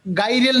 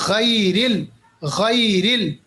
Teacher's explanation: حالانکہ اتنا آگے نہیں کرنا، اتنا بھی مطلب ایگزیجوریٹ نہیں کرنا، مگر تھوڑا سا میں آپ کو آئیڈیا دے رہا ہوں کیسے اس کو ادا کرنا ہے. تھوڑا سا بھاری، موٹا اور غرگلنگ کے ساتھ، غین خا. جیسے ہم مثال دیں گے، ہم پڑھیں گے غیرل، گائرل نہیں ہے، یہ گاف نہیں ہے، یاد رکھیے گا، گائرل نہیں، غیرل، غیرل.